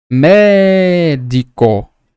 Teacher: vejam que na mais forte eu sempre paro mais médico então a mais forte ela é a palavrinha tônica E